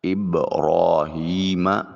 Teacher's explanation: با ساکن ہے، قلقلہ واجب ہوگا